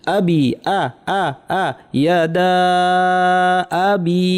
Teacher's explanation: টানের পর যে হামজাটা আছে এটাকে শক্ত করার যত্নবান হতে হবে, এটা অনেকে নরম হয়ে যায় আমাদের।